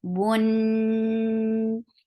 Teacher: And there is akmal gunna. Keep the sound in your nose for a longer time.